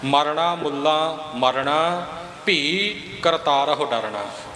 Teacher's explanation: ਮਮੇ ਦੇ ਔਂਕੜ ਦੇ ਉੱਪਰ ਵੀ ਵਜ਼ਨ ਦੇਣਾ ਅਧਕ ਦਾ ਤੇ ਲੱਲੇ ਦੇ ਕੰਨੇ ਨੂੰ ਵੀ ਥੋੜਾ ਜਿਹਾ ਨੱਕ ਦੇ ਵਿੱਚ ਬਿੰਦੀ ਰੂਪ ਵਿੱਚ ਬੋਲਣਾ